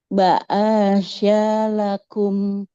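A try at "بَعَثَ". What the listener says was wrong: Ba'asa nggak boleh ada yang panjang. Ba'asa ainnya fathah tidak bertemu alif. Kemudian sa-nya, nah fathah juga tidak bertemu alif. Bukan huruf shin ya, tapi sa. Ujung lidahnya menempel ke ujung gigi seri atas. bukan syah, sa, sa.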